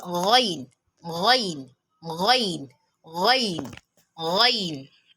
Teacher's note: It is pronounced from the throat. That means the point of articulation of ghain is al-halq. It is pronounced as ghain, ghain, ghain, ghain, ghain.